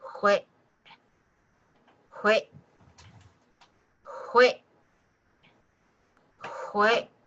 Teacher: You're cutting the air off with the back of your throat. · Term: the glottal